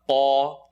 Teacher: Qaf is heavy behind the uvula